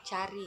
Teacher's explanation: rendah depan tak bulat